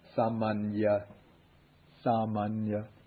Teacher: But you can't really pronounce both of them. So the first one really becomes just like the ordinary N, and then the second one is like the NY.